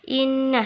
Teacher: Innah dihukumi gunnah musyaddadah karena nun tasydid.